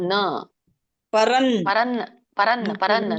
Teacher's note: ಪರಂ ತಪ ಮ ಅಲ್ಲ ಮಾತಾಜಿ, ನ ಹೇಳ್ಬೇಕು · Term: ಅನುಸ್ವಾರ